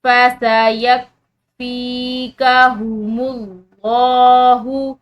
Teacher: لفظ اللہ کی لام موٹی پڑھیں گے